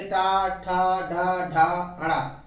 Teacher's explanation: तो ये जिह्वा ऊपर की ओर मुड़ जाती है। जिह्वा का जो नोक है वो ऐसे टर्न होता है पीछे की तरफ, इसलिए इसको मूर्धा कहते हैं। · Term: मूर्धन्य